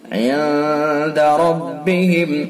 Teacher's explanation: اس کے اندر اخفاء حقیقی ہوگا، غنہ خیشم سے اس کو ادا کریں گے